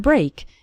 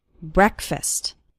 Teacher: the first syllable of breakfast is pronounced with an eh sound. It's not like the word break.